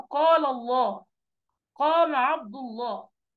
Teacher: وتفخيم كلمه اللام في لفظ جلال الله اذا تقدمها فتح او ضم